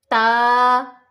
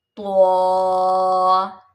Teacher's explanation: ता को जब हम पढ़ेंगे तो हमारी ज़बान ऊपर वाले दांतों के साथ लगेगी। ता, त्वा, और त्वा में हमारी ज़बान थोड़ा सा पीछे आएगी।